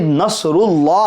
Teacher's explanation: तो लफ्ज अल्लाह के लाम को पूर पढ़ेंगे मोटा पढ़ेंगे